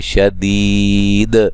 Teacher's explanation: دال کو واضح طور پہ قلقلہ کریں گے ، شدید دال کو ہلا کے پڑھیں گے، ٹھیک ہے۔ ملانے